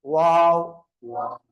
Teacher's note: இரு உதடுகளும் குவிந்த நிலையில் குவிந்த நிலையில் வைக்கும்போது வாவ் வெளியாகுது